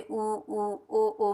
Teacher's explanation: जिनके उच्चारण में ओठों की आकृति वृत्त के समान बनती है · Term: वृत्ताकार